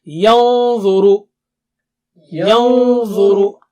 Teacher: when you keep your tongue tip close to the makhraj of dha, your Noon Sakina will also become thick and high